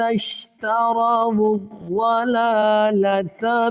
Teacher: واو کو ضاد کے ساتھ ملائیں گے